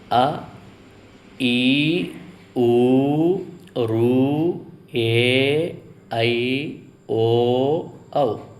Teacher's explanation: రెండు మాత్రల కాలంలో ఉచ్చరించే అచ్చులను దీర్ఘాలు అంటారు